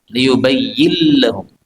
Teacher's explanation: pada ayat ke-39 nun ketemu lam ini boleh idgham